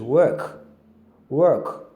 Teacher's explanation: So work, the O there has the schwa sound. That's the sound that is that if you look at the transcription, that's the sound you have there as the schwa sound.